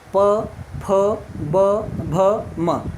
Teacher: आप देखो दोनों ओठ क्या हो रहे हैं, आपस में जुड़ रहे हैं, तब इनका उच्चारण स्थान हो रहा है, टच कर रहे हैं। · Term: ओष्ठ